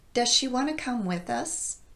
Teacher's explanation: Here, because of the speed at which I'm saying this phrase and the difficulty of getting quickly from a z sound to a sh sound, the z in does gets dropped. So it sounds like does she.